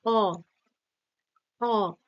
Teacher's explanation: জিভটা দেখো পেছনের দিকে যাচ্ছে, পশ্চাতে থাকছে এবং সেই নরম যে তালু সেখানে গিয়ে হালকা ঠেকছে, তাই না? বা তার কাছাকাছি থাকছে। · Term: কণ্ঠ স্বরধ্বনি